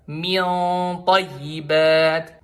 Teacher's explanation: Bukan cuma lidahnya diposisiin di gusi belakang seri atas. Tapi karena sifatnya huruf to itu isti'la, maka pangkal lidah ikut keangkat.